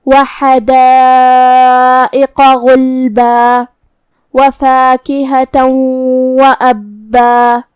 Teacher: کلمت وَأَبًّا میں یہاں شروعات میں حمزۃ قطع ہے، تو ہم حمزہ کو ظاہر کریں گے اور اسے حلق کے نیچے والے حصے سے ادا کریں گے۔ با پہ تشدید ہے تو 2 حرف کے برابر ہم حرف البا کو پڑھیں گے اور یہ کلمہ پہ رکیں گے تو اس پہ مد الف سے رکیں گے۔